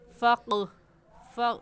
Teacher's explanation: इनको पढ़ते वक्त मखरज में हल्की सी जंबिश होती है और आवाज़ पलट कर भी आती है। फ़क़रऊ कहना गलत है, बल्कि कैसे कहेंगे फ़क़ फ़क़, वापस पलट कर आवाज़ आएगी फ़क़रऊ। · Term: कलकला